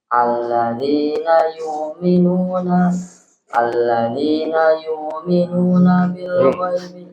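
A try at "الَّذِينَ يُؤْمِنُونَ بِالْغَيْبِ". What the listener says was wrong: Hamzah nggak boleh begitu. Jadi Hamzah itu harus memotong suara. Alladzina yu'minuna gitu ya. Jadi nggak boleh alladzina yu'minuna enggak, tapi dia alladzina yu'minuna.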